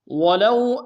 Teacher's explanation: واو لین بغیر کھینچے پڑیں گے